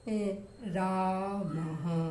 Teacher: विसर्ग का जो उच्चारण है जैसे रामः, तो विसर्ग की भी आवाज आ रही है ह के रूप में और अ की आवाज आ रही है रामः।